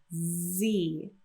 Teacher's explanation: when you say number 26 Z you should feel vibration coming from the throat